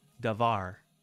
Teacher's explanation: the tonic syllable in the singular is var